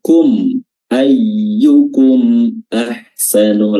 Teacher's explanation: Ya, izhar itu jelas, mimnya dibaca jelas, dan syafawi diambil dari makhrajnya huruf mim yaitu syafatain. Ya, mimnya dibaca jelas, tidak ditahan, tidak digunnahkan, tidak disamar-samarkan, tapi dibaca jelas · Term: izhar syafawi